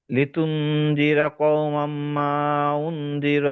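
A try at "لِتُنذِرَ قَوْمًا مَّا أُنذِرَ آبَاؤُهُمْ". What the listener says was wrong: ও মাম, এই যে মাম, মিমে ধরে একালিফ রাখবেন। হ্যাঁ, একালিফ ওয়াজিব না তো।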